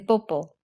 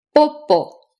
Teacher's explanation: The three P sounds, lax B as in 비행기, which is very slightly aspirated, aspirated P as in 팔, which is much more aspirated, and tense B as in 뽀뽀, which is unvoiced, unaspirated, and comes out with a lot of lip and throat tension, which usually makes the vowel afterwards higher pitched